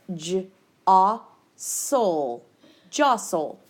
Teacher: You don't actually hear that T sound. The T sound is silent. The O is short and would have a breve above it.